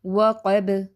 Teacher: با بھی ساکن پڑھیں گے تو پھر قلقلہ ہو جائے گا